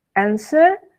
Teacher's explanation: W-nya itu tidak usah dibaca, jadi answer gitu saja.